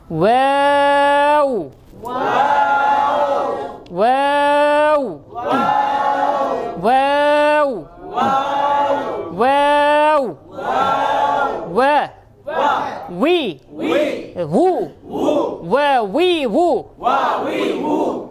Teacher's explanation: বা লাগলে দুই ঠোঁট চাপ লাগতেছে, আর ওয়াও থাকলে দুই ঠোঁট চাপ হবে না